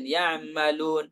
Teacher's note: Dia mengucapkan setengah ain. Ya'malun. Setengah ain tidak sempurna.